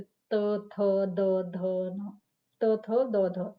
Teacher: place of articulation में है dental sound जो दांतों के उच्चारण के साथ होता है